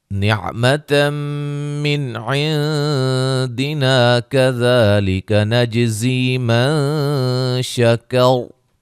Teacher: جیم پہ قلقلہ، زی یا مدہ ہے، من نون ساکن کا اخفا ہے، را کو موٹا ادا کریں گے وقفاً وصلاً۔